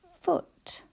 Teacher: the sound where our teeth are on our bottom lip